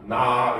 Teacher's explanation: 첫 번째 평성 요거는 방점이 없어요 점이 없어요 알겠죠 없으면은 높이는 낮은 소리입니다